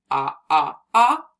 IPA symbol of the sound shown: ŏ